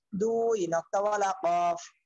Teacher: জিব্বার গোড়া তার বরাবর উপরে তালুর সঙ্গে লাগাইয়া 2 নক্তাওয়ালা কফ